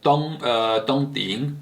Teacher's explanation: tong ting, which is fourth tone and third tone